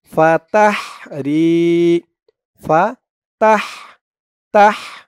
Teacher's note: এই হার আওয়াজটা গলার ভিতর থেকে চিকুন হয়ে বের হবে